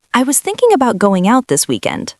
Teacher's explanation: Notice how thinking about links together. Not two separate words. One smooth sound.